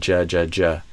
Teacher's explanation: So, there's a stop and an explosion. Not just a continuous, but there's a J- JJ.